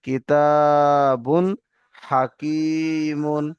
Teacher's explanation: পরে হরফে হালারকি ছয়টি অক্ষরের মধ্যে একটি অক্ষর হা এসছে তাই তানবিনের আওয়াজকে বিনা গুন্নায় তাড়াতাড়ি জাহির করে পড়তে হবে